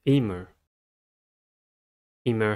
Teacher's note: has two syllables and the stress is at the first one